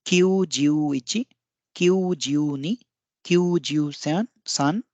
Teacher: दोनों में एक अतिरिक्त ऊ है, यानी कि इसमें दीर्घ ध्वनि आएगी दोनों में, क्यू में भी और ज्यू में भी।